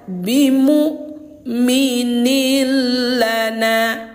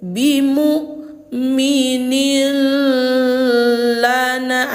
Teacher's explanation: hanya sekedar dimasukkan, dileburkan, tapi enggak boleh dengung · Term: idgham bila ghunah